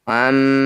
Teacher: bunyi mim dengungkan dua harakat dengan cara merapatkan bibir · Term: gunah musyaddadah